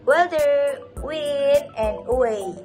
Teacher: The sound W is a voiced bilabial approximation. The lips are rounded and then airflow in is not completely blocked.